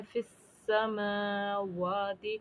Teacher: यानी सीन मुशद्दद हो गया है, तो इसको फ़ा को हमें सीन के साथ मिलाना है।